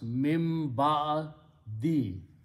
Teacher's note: when min, noon and ba come together, the noon loses its sound and it turns into a meme.